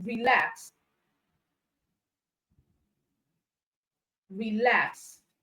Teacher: it means that the stress is on the second syllable so in relax we have LAX as the stress syllable